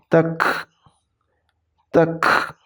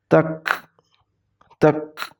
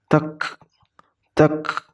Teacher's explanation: Ketika mengucapkan kaf sukun itu sedikit mengeluarkan angin. Tak, tak. Jadi ini tidak dipantulkan, hanya angin dikeluarkan setelah mengucapkan huruf K.